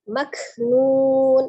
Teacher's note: Maknun, ada huruf kaf sukun ya, sifatnya al-hamas, ada udara yang mengalir ketika mengucapkan huruf kaf tetapi tidak berlebihan ya, mengalirnya udara bukan mengalirnya suara. Nun, hati-hati ketika ujungnya nun, jangan disukunkan nunnya ketika posisi bibir kita sedang maju ya, mengucapkan dhammah nun, tapi kembali, harus dikembalikan ke posisi semula untuk sukun nunnya.